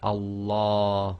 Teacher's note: the Lamb of Allah Go full mouth giving the sound of La as in English word large